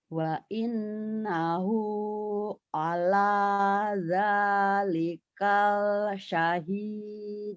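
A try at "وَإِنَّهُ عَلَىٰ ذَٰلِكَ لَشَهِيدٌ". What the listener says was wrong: Kaknya pendek. Zalika la syahid. Lanya dibaca. Lanya ketinggalan tadi. Wa innahu ala zalika la syahid.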